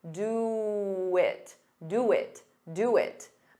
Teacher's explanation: have for sounds like f fur very unstressed and do it to get rid of that pause you can add a very soft W